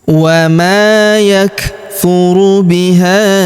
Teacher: Huruf ha kita panjangkan empat atau lima harakat karena di depan huruf ha terdapat alif yang di atasnya terdapat tanda garis bacaan panjang empat atau lima harakat ya.